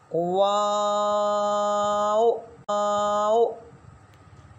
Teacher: इसको अदा करते हुए एक बात का ख्याल रखें कि जैसे ही वाव शुरू करने लगते हैं ना, वाव शुरू करने लगते हैं, उसी वक्त होंठ को गोल किया जाएगा और आखिर में भी होंठ गोल ही रहेंगे